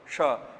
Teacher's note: भाई तालु से उच्चारण किया जा रहा है इसीलिए तालव्य शकार, तालव्य शकार, ध्यान रखिएगा।